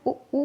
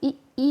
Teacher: तो देख जैसे हम ऊ कह रहे हैं तो हमारे जो होंठ है ना वो थोड़ा गोलाकार हो रहे हैं, तो इसका मतलब क्या है, ऊ कैसे हैं, वृत्ताकार हैं, ठीक है। और जब हम ई कह रहे हैं तो हमारे होंठ थोड़ा चौड़े हो रहे हैं, यानी कि गोल नहीं हो रहे हैं, तो ये क्या हो जाएंगे, अवृत्तमुखी।